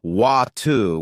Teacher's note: In American English, people might say water with a D sound, while in British English, it's often watu with a T sound.